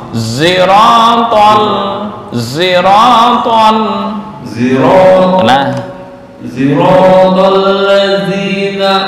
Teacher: Membaca Shad itu antara Shad dan Za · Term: ismam